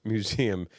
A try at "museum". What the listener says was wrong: One, there's a Z that you're putting that's not there.